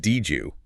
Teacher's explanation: Formula 3 is D + Y equals J. A word ending in D followed by a word starting in Y creates a soft J sound upon collision.